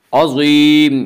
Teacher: عظیم یا مدہ ہے، اس کا قاعدہ یہ یا مدہ اس یا کہتے ہیں جو یا ساکن ہو اس سے پہلے زیر ہو، یا مدہ کو ایک الف کے برابر کھینچ کر پڑھیں گے۔